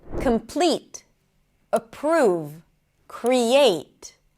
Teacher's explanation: the stress is going to be on the second syllable